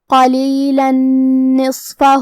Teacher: اگر ہم یہ آیت کو اگلی آیت کے ساتھ ملا کے پڑھے تو حرف النون کلمت نصفہ حروف الادغام بغنہ میں سے ہے اور ادغام کا معنی ہے حرف کو حرف میں داخل کرنا، لہذا ہم یہ تنوین کو نون میں ملا کے غنہ اور تشدید کے ساتھ یہ حکم کو ادا کریں گے